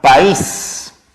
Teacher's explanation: la vocal cerrada tiene el acento al costado de la abierta